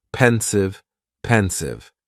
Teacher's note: just two syllables and the stress is on that first syllable